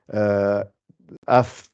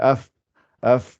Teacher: Le fa, pour la sortir, c'est l'extrémité des dents du haut, là, avec l'intérieur de la lèvre du bas. Ça fait af, quand on fait af, af.